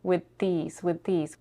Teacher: Not only is she not pronouncing the TH, she's devoicing it. She's not leaving enough space between her tongue and the teeth. It doesn't sound like a TH. It sounds a little bit more like a T.